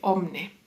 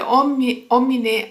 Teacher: cambiando y ahora tenemos la y pasó a la palabra omne la i dejó de pronunciarse